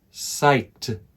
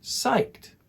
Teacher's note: notice that the sound at the end is a t not an ed